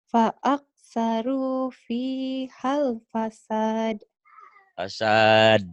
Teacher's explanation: Fasad. Ada de-nya. Itu yang dikatakan kol-kolah.